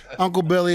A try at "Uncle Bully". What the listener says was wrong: No, Uncle Bully, not Billy. Bully.